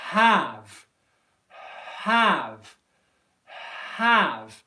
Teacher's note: I'm making the H sound by just simply breathing out with no voicing. And then I'm turning on the voicing for the a vowel sound.